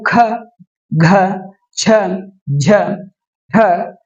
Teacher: ಇವು ಹೆಚ್ಚು ಉಸಿರಿನಿಂದ ಉಚ್ಚರಿಸಲ್ಪಡುವಂತಹ ಅಕ್ಷರಗಳಾಗಿರುತ್ತವೆ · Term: ಮಹಾಪ್ರಾಣ